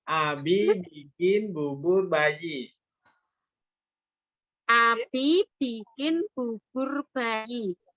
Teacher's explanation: Jangan terlalu dalam ya. Cukup di ujung bibir dan dia mingkemnya lunak ya